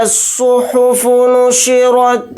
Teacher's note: صاد کو موٹا یعنی پر پڑھیں گے، را کو بھی یہاں پر موٹا پڑھیں گے۔